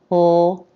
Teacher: This word starts with a light L consonant sound, L, Tip of the tongue is lifted up and making contact behind the upper teeth. La. Then the a as in bat vowel.